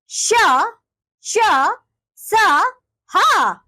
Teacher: इन व्यंजनों के उच्चारण में हवा तेज गति से मुंह के भागों से रगड़ खाती हुई बाहर निकलती है जिससे गर्मी पैदा होती है इसलिए इन व्यंजनों को ऊष्म व्यंजन